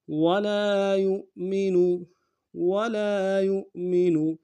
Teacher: یا کو حمزہ کے ساتھ ملائیں گے، حمزہ کو جھٹکے سے ادا کریں گے، یہ جو ہے حمزہ بشکل واو ہے.